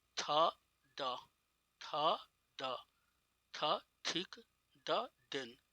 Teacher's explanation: जब जीभ का सिरा ऊपरी दांत के पीछे छूता हो। Tip of tongue touches द back of upper teeth, टंग का टिप अपर टीथ के बैक में छूता हो तो उसे डेंटल कहते हैं